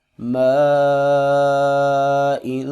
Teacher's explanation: یہاں پر الف کے اوپر مد آ رہا ہے اور اسی کلمے کے آخر میں حمزہ بھی آ رہا ہے تو ہم یہاں پر اس مد کو 4 الف کے برابر لمبا کریں گے